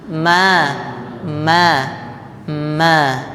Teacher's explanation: Ma itu dua bibir. Ma. Oke.